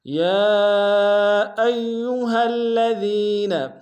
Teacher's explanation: یا میں کھڑا زبر ہے اور مد منفصل ہے، کم سے کم دو بار امتداد میں کھینچیں گے، حمزہ کو یا کے سامنے آئیں گے، یا کے اوپر تشدید زور دیں گے، ہا کو الذین کے لام کے سامنے آئیں گے، تشدید زور دیں گے، دال کو یا کے سامنے آئیں گے، یا مدہ ایک امتداد میں کھینچیں گے۔